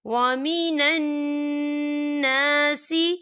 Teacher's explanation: یہاں پر نون مشدد ہے تو یہاں پر غنہ ہوگا۔